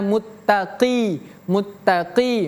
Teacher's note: Huruf qof itu merupakan salah satu huruf yang tebal.